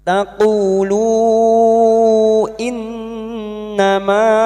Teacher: nun yang bertasdid ghunna musyaddadah kita dengungkan selama tiga harakat. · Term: gunna musyaddada